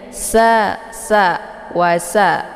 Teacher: Dan jelas bunyi anginnya karena dia sifatnya adalah shafir. Nah, dibaca pendek.